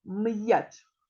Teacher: перший звук м це твердий приголосний звук